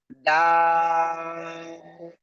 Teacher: সেই অক্ষরটা কি, এই যে দেখেন, এই অক্ষরটার নাম কি, কোন জায়গা থেকে উচ্চারিত হয়, ওই একই জায়গা থেকে, জিহ্বার আগা উপরে দুই দাঁতের গোড়ায় লাগান, লাগিয়ে আপনি তিন আলিফটা নিয়ে উচ্চারণ করেন, ডা, ঠিক আছে, ডা।